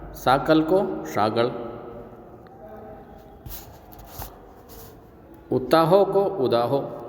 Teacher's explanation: और अनेक अघोष व्यंजन सघोष हो जाते हैं